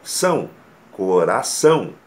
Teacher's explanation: A palavra coração é uma oxítona, com ênfase na última sílaba.